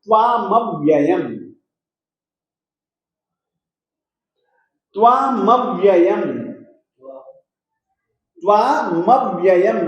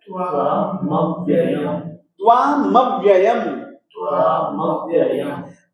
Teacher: जैसे कि त्वामव्ययम् में त जो है वह बिना स्वर का है, न इसमें अ है, न ई है, न उ है, कुछ भी नहीं है, केवल अकेला त है, मूल व्यंजन है और बिना स्वर का है। दूसरा मव्ययम् में जो व है ना, वह हलंत है, बिना स्वर का है। तो इनका उच्चारण करते समय इन वर्णों के साथ में स्वर नहीं जुड़ेगा और इनका उच्चारण इतना स्पष्ट रूप से हम करेंगे कि बिल्कुल आधा ही मिलेगा।